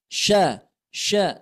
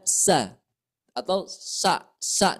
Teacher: di sini huruf syin huruf syin ini mempunyai sifat tafasyi Ya keluarnya huruf syin ini dari tengah-tengah lidah kita